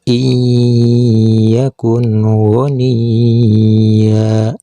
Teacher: Untuk nun sukunnya harus dibaca jelas seperti huruf N. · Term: idhar